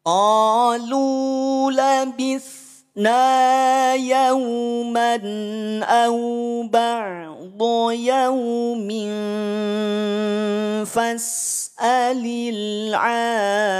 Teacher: Ain, setelahnya ada alif, ain yang tersambung dengan alif panjang 6 harokat. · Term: mad lazim musaqal kilmi